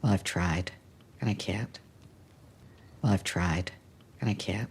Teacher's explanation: even though she goes up, we can see that we have the tried and we have the can't stressed.